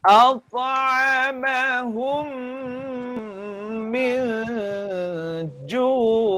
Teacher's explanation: pastikan hum ni lama ya. Lamanya dua harakat.